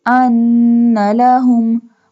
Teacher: We do gunna on noon because noon has the tashdid sign